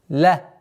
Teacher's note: звук лям должен произноситься максимально мягко, ля. А потом уходим на твердый.